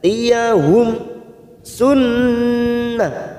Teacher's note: nun yang bertasdid gunnah musaddadah kita tekan 3 ketuk.